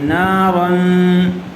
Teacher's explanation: تنوین کے بعد زال آئی ہوئی ہے حروف اخفاء میں سے، اس لیے غنّے کے ساتھ اخفاء کر کے پڑھیں گے. نارن، زال الف زبر زا، نارن زا، تا زبر تا، نارن ذاتا.